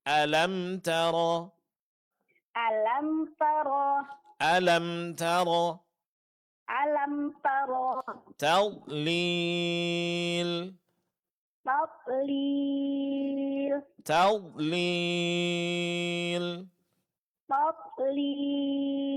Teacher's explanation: Tetap pada huruf ta, dua-duanya itu ditipiskan.